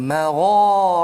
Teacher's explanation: Jadi au magha, isti'la tebalkan dia. Magha, ra pun tebal juga walaupun dia bukan huruf isti'la, tetapi ra apabila beri fathah, dia adalah dalam satu keadaan yang mana ulama kata kena tebalkan bunyi dia.